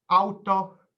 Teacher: the word for a car, auto, is pronounced with a shorter sound than a full U.